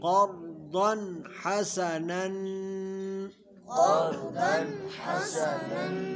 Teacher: تنوین کے بعد حروف حلقی میں سے ح آ رہا ہے تو یہاں پہ اظہار ہوگا، یعنی غنہ نہیں کریں گے